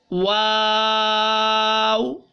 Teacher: वाव को बिल्कुल होंठ गोल करके शुरू कीजिए और फिर खोलिए और दोबारा होंठ वापस गोल कर दीजिए